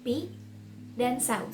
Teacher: terdapat dua fonem vokal a dan u yang terletak berdampingan di dalam satu suku kata yang sama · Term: gugus fonem vokal